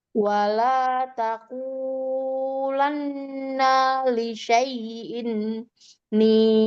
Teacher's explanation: Tidak tasdid lam. Nanya juga pendek, hanya gunnah di nun tasdid.